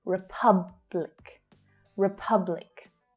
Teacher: can you hear that in republic, it's the second syllable that's stressed. The first syllable reduces right down. It becomes the schwa.